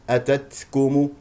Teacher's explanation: التاء الثانيه ساكنه فيها همس